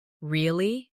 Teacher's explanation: with a rising tone to show surprise